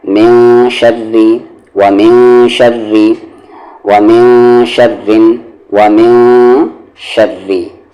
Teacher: تو یہاں دیکھیں نون ساکن کے بعد شین ہے اور شین حروف اخفا ہے، تو یہاں پر من نہیں پڑھیں گے، میں پڑھیں گے آواز کو چھپا کر